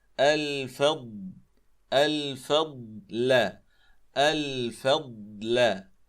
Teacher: لاحظوا هذه الضاد الساكنة، الفضل، فقبلها الفاء مرققة وبعدها اللام أيضا مرققة، فلا نفخم الجميع